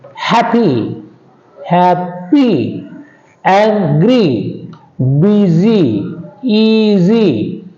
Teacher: All these 2 syllable adjectives also take stress on the first syllable.